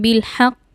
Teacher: কলকলা হরফের উপর তাসকিদ আসার কারণে আমরা কলকলা প্রতিধ্বনি করে পড়ব